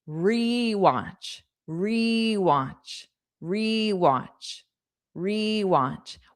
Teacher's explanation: Now, a lot of times in English, sounds are unstressed, but when you add re to the beginning of the word, to the verb to mean do it again, whatever that verb is, do it again, you have a long E sound.